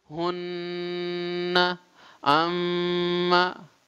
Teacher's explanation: ketika mengucapkan huruf gunnah, hunna berarti langsung keluar di pangkal hidung otomatis